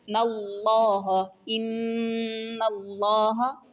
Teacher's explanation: ان اللہ، ان حروف مشبہ ہے، یعنی یہ حرف مشدد والا حرف ہے، تشدید ہے، اس کے اوپر شد ہے، تو اس لیے اس پہ غنہ ہوگا۔ ان اللہ، لفظ اللہ سے پہلے زبر ہے، اس لیے اس کے لام کو پور پڑھیں گے۔